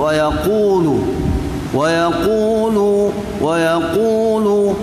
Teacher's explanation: qaf ialah pangkal lidah, tuan-tuan, pangkal lidah, terangkat pangkal lidah waktu menyebut wa yaqulu